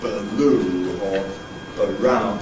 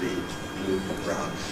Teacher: Notice that the tongue is always ready for the /l/ or the /r/ well before the lips separate from the /b/ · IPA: /bluː/, /braʊn/